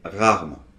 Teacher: On ne dit pas rarement. Non, non, ce E, on ne l'entend pas en fait, ça fait rarement.